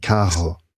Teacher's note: So it sounds like an H when it's at the beginning and in the middle, if it's a double R.